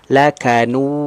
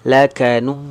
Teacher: Sengau ya bunyinya, nyangkut ke rongga hidung, itu enggak boleh.